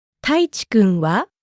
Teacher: This is a shortened question sentence, so you need to say this expression with a rising intonation.